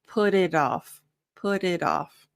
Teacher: the T's, both put and it, turn into more of a flap T, which is that like TD sound. So it's softer.